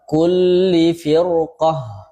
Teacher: tebal karena huruf isti'la, dan huruf isti'lanya berbaris fathah.